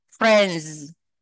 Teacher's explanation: Thì cái chữ S của cái từ friend đó, friend nó sẽ đọc thành âm z